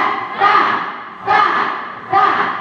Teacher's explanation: lidah jangan keluar dan tanpa ada suara mendesis, bukan sa, tapi ta, karena ujung ke ujung.